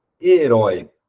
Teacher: herói não é uma paroxítona a sílaba tonica é a última então herói é uma oxítona que permanece com o assento então